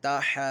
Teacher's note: اب یہاں پہ یہ کھڑا زبر ہے اور یہ الف مدہ کی طرح ہے، اس کے بعد جو ہے سکون اصلی میں سے تجدید پائی جا رہی ہے، تو یہاں پہ مد لازم کا قاعدہ ہوگا 6 حرکات کی مقدار تک اس کو کھینچ کر پڑھنا ہے، اور یہ ضاد جو ہے حروف مستعلی میں سے اس کو ہم نے پر بھی پڑھنا ہے